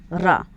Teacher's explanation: जब आप रा को बोलते हैं तो थोड़ा सा झनकार आपके जीवा में उत्पन्न होता है, और इसी को झनकार को ही प्रकम्पन या कंपन कहा जाता है। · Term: प्रकम्पित